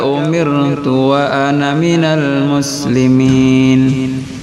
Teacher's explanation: Dalam percakapan ana itu biasanya panjang, tapi di dalam Quran semuanya pendek, dibaca pendek.